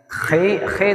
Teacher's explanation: Khi khi itu di ujung ya, di atas di atas tenggorokan bagian atas